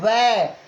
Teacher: इसमें दांत और ओठ दोनों का संयोग होगा। वह का उच्चारण स्थान, वह का उच्चारण स्थान दंतौष्ठम होता है, दंतौष्ठम होता है, दांत और ओठ होता है, दंतौष्ठम होता है। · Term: दंतौष्ठ्य वर्ण